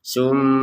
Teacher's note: Di sini ada mim bertasydid, kita baca dengung 100%.